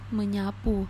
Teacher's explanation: resiprokal ini merupakan perubahan pada kedua hurufnya artinya saling memengaruhi contohnya mengsapu itu bunyinya akan menjadi menyapu dan s itu berubah menjadi n